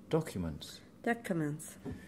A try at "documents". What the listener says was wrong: It's that Y that mm-hmm. you were missing out yesterday as well. The Y. Documents.